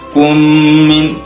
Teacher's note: Ya, idgham mislain atau idgham mutamassilain ataupun idgham mim. Mim bertemu dengan mim hukumnya dengung.